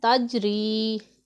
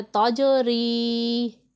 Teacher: کچھ لوگ ایسے پڑھتے ہیں تجری، تجری نہیں پڑھنا۔ جیم حروف قلقلہ میں سے ہے اور ساکن ہے، اس میں ہم نے خوب قلقلہ ظاہر کرنا ہے